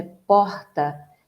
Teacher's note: No Rio de Janeiro é porta, O R, ele vem aqui embaixo, retroflexo, que nós chamamos.